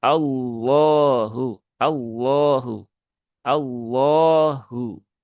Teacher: lafaz Allah yang dibaca dengan tebal itu dilakukan dengan cara mengangkat pangkal lidah ya.